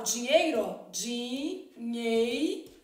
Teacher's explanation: O EI, que a gente chama de ditongo. No caso, o E é a vogal e o I é a semivogal.